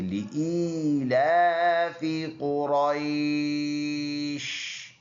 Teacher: یہ یا لین ہے، یا سے پہلے ورڈ پر زبر ہے، نرم ادا کرنا ہے